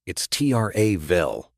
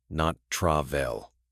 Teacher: For pronunciation, stress the first syllable in travel.